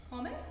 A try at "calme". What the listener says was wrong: The way, to my ear, it sounds like calme. It sounds, there's too much awe in it for me. Calme. And when you have these, stretch into them. Don't try to place.